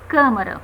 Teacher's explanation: veja que o som a pronúncia já é fechada · indica a sílaba tônica também mas o som é fechado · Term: acento circunflexo